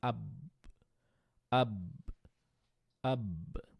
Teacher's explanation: এই আব বা এর উপরে যখন আমি সুকুন দিলাম আমার মুখটা লেগে যাচ্ছে